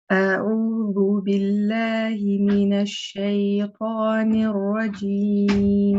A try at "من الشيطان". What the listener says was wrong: Yeah, I don't know if you noticed, but you said minash.